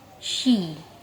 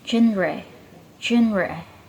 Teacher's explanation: Sh is voiceless postal velar fricative, while j is voiced postal velar fricative. Both have air flows through a narrow space, but j with vocal cords vibration.